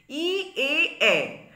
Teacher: হলো ই তেও প্রসারিত এ তেও প্রসারিত এ তেও প্রসারিত তাহলে ই এ এই স্বরধ্বনি উচ্চারণের সময় আমাদের ঠোঁট প্রসারিত হয় · ই এ এ এই স্বরধ্বনি উচ্চারণের সময় আমাদের ঠোঁট প্রসারিত হয়, তাই এগুলি প্রসারিত স্বর ঠোঁটের প্রসারণ অনুসারে।